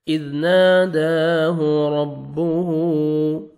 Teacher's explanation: را کو زبر ہے، را کو موٹا کر کے پڑھیں گے ، ہا کو الٹا پیش ہے، واو مد کے قائم مقام